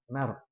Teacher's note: Nah, paling ditebalkan lagi tadi dibacanya mar. Nah, ditebalkan lidahnya diangkat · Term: ro mati